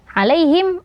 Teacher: huruf ya sukun sebelumnya huruf berharokat fathah, maka ini juga namanya lin ya, dibaca lembut